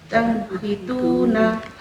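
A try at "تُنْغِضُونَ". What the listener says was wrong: Masih ada ngoroknya dikit.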